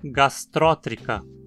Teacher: O i em tri é curto, então o acento não pode cair aí. Temos que dizer gastrótrica.